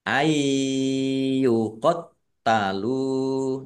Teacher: nun sukun bertemu dengan huruf ya bacaan idgham bi gunnah masuk dengan mendengung ya mendengung ya ditahan biar tampak dengungannya